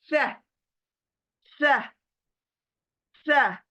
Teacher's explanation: किनारे कौन से, जहां से हम कट करते हैं, बाइट करते हैं, कतरते हैं कोई चीज, तो वहां पर जबान स्प्रेड होगी और क्या कहेंगे, सह, सह, सह। सीन की आवाज सीटी वाली बिल्कुल नहीं,